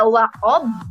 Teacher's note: Ketika kita membaca wa'ob harus dipantulkan dengan jelas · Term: huruf qalqalah